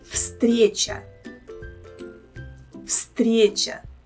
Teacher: I think it will be better for you to pronounce them if you know that the first letter V here should be pronounced as F